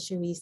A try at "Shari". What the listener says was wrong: It's Shari, no S. Yes, it's French, but I just say Shari.